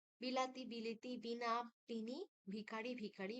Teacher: পূর্ববর্তী হস্ ধ্বনির প্রভাবে পরবর্তী আ ধ্বনি ই ধ্বনির রূপান্তরিত হয়